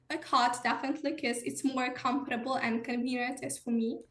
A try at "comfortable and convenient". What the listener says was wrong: Not quite getting that f and v, right? Comfortable, convenient. It sounds a little bit like comfortable, convenient, just a little bit. Comfortable and convenient. So that comfortable and the f and the v don't quite come out. I'm not quite sure why.